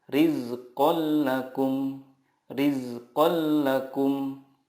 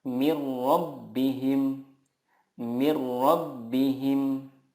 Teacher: cara membacanya meleburkan nun sukun ke huruf berikutnya tanpa guna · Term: idgham billaghunnah